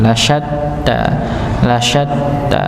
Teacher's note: ada huruf ta yang dia bertasdid maka di dihentakan